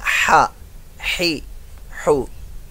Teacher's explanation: बाद लोग यहां भी इसको अदा करते हुए ना ये साउंड बना देते हैं, हा ही हु, ये मिडिल पार्ट ऑफ थ्रोट, हलक के दरमियान वाले हिस्से से